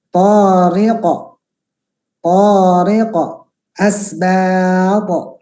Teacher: Jadi huruf qaf dan to ya, huruf qaf dan to itu ada nanti kita pelajari namanya sifat isti'la, pangkal lidah yang diangkat, gitu ya, yang sehingga bunyinya itu menjadi tebal